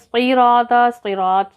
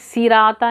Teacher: صراطا صراط صاد کو موٹا پڑھیں گے, سراتا نہیں پڑھیں گے, صاد کو موٹا پڑھیں گے, را کو بھی موٹا پڑھیں گے اور طا کو بھی موٹا پڑھیں · سوین علی 2 کاؤنٹ کریں گے, کھڑی حرکت ہے. صراطا صراط صاد کو موٹا پڑھیں گے